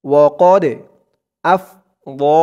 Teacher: পরের পৃষ্ঠায় ধরুন আয়াতের বাকি অংশটুকু এই পৃষ্ঠায় ওয়াকাদ আফযা ওয়াকাদ দালটা কলকলার হরফ ধাক্কা দিয়ে পড়তে হবে